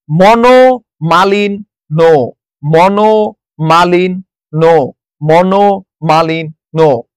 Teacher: নর সাথে জ ফলা থাকায় ন টা দুইবার উচ্চারিত হয়েছে